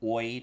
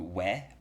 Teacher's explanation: this sound had already at least started its transition from oy to way by 1700